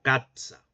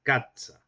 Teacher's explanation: En primer término teníamos el africado sibilante alveolar sordo, el cual en los textos escritos se realizaba o se representaba mediante la grafía de la C con cedilla.